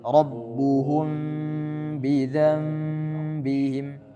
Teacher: Jadi mimnya itu seperti dibaca samar-samar, tidak ma tidak tapi ma. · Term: ikhfa syafawi